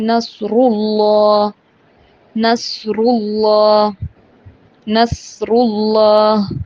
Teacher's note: را کے اوپر پیش ہو تو را کو پر پڑھیں گے